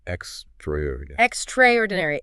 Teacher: the A from extra kind of disappears and you lose a syllable. The stress lands heavily on traor.